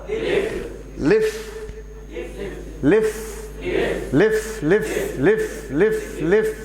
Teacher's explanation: ऊपर के दांत नीचे होठ से ऐसे मिलाना और आपको बोलना लिफ